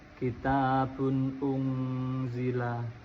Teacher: tanwin bertemu dengan hamzah itu termasuk bacaan idhar, wajib dibaca jelas